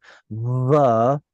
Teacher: I'm literally buzzing my lips together.